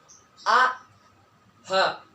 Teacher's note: Oke, yang pertama ada huruf a dan h, yaitu tenggorokan bawah, a dan h, ya, itu keluar dari tenggorokan bawah atau aqsal halqi